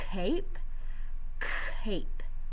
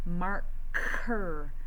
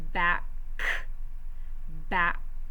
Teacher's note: a coughing sound is made in the back of our mouth so our tongue is up in the back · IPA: /k/